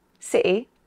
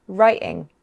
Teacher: we can also pronounce the letter T as a glottal stop, in many accents.